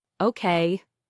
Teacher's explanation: When someone says, okay, with a falling tone, it usually means they agree or understand.